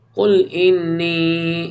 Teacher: نون مشدد ہے، غنہ کریں گے، پھر ادغام ہوگا